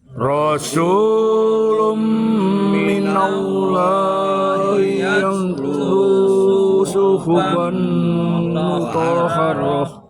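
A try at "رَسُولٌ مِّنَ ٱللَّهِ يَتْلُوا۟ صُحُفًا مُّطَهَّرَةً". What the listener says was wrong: Rasulun idgham bihun. Kita tahan sepanjang 2 harakat seperti materi. Rasulun minal. Jadi tidak hanya sekedar dimasukkan. Jadi jangan Rasulun minallah. Itu tidak guna namanya. Idghamnya betul, ya, tapi harus ada gunanya. Guna itu sepanjang 2 harakat.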